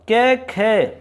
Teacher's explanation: कै में आप जितनी प्राण वायु की आवश्यकता आपको हो रही है उससे ज्यादा खे में होगी, तो इसका मतलब ये महाप्राण में आएगा।